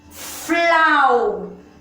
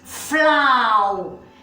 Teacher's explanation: Quando eu pronuncio a primeira sílaba, o som do A e o U ficam juntos. Flau. Vejam que o som do A é mais forte do que do U. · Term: ditongo